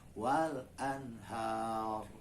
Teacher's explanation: Pada kata wal anhar, ro-nya menjadi tebal karena berhenti di huruf ro kita bacanya, kemudian ada alif mati yang disebut dengan huruf mad.